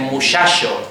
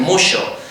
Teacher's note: Aquí en Andalucía y en el Caribe en general, en las zonas costeras de América, hay la tendencia a que la che se pronuncia como she